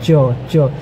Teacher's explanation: च वर्ग का जितना भी वर्ण होता है उसका उद्गम स्थान क्या है पता है आपको, तालु होता है। च जीभ जो होती है वह तालु पर लगती है और तब जाके वह वर्ण आपके अंदर से निकलता है।